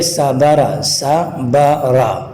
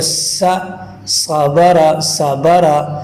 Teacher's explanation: سین کو ہم پتلا ادا کرتے ہیں اور صاد کو ذرا موٹا کر کے ادا کرتے ہیں